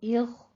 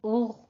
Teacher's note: Stop کرنا ہے اس آواز کو۔ اس آواز میں آپ کی حرکت نہیں ہونی چاہیے کیونکہ یہ قلقلہ والے حروف میں سے نہیں ہے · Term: غین